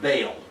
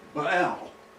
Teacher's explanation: in Hebrew, the two vowels are pronounced separately, Baal. This word, like the English word Lord, has two different meanings.